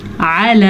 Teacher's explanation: اب پھر اللہ کے نام سے پہلے زبر آیا ہے تو اللہ کا نام پر پڑھیں گے، اور واللہ یہ طریقہ ہے پر پڑھنے کا. علی، عین جو ہے وہ گلے سے نکالنا ہے، حلق کے درمیانی حصہ سے عین نکلتا ہے